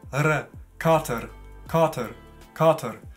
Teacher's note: das ist ein R, ein leicht gerolltes R, würde ich sagen.